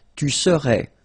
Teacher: you don't pronounce the final S